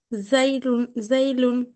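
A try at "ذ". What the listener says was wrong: উচ্চারণটা, সরি বলছি, জাল উচ্চারণটা আরো পাতলা করতে হবে।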